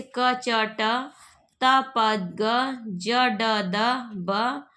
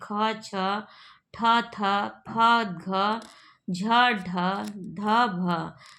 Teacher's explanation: कम वायु से उच्चरित ध्वनि, अल्पप्राण तथा अधिक वायु से उत्पन्न ध्वनि महाप्राण कही जाती है। प्रत्येक वर्ण का पहला, तीसरा और पांचवा वर्ण अल्पप्राण होते हैं।